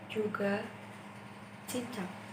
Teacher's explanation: J dan C yang merupakan konsonan hambat prapalatal